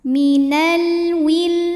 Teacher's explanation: alif lam menghadapi huruf qamariah yaitu wau maka lam dibaca jelas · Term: alif lam qamariyah